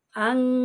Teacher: নাকে তুলে এক আলিফি পরিমাণ গুন্না করতে হবে ইকফা করতে গেলে আমাকে নাকে তুলে এক আলিফ পরিমাণ গুন্না করে